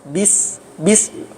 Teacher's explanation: tidak ada tiupan napas dari bibir ketika melafalkan huruf ba misalnya ya, bis bi sehingga kalau orang ngetes itu orang-orang ee yang belajar makharijul huruf dan sifat-sifat huruf kalau ngetes huruf ba itu diletakkan tisu di depannya kemudian dia mengucapkan ba.